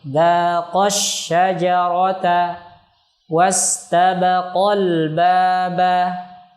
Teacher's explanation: Contoh pada kalimat dzaqash syajarata, qa-nya di sini dihentak atau nabr